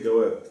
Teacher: how the Egyptians pronounced the letter G, so we said Jawab, you would say Gah